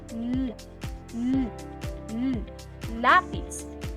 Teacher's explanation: sa punto ng artikulasyon na panggilagid at sa paraan ng artikulasyon na pagilid at mayroong tinig